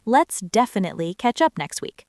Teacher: Try shadowing that phrase and put the stress on the first syllable of definitely